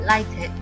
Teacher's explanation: Schwa insertion is used to the word lighted because a schwa is inserted before the d sound.